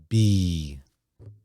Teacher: The letter B, when you make the B sound, you feel the vibration.